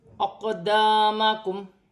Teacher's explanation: قاف ساکن ہے، حروف قلقلہ میں سے ہے، قلقلے کے ساتھ ادا کیا جائے گا